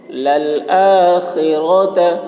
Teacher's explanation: خا کو خلق سے ادا کریں گے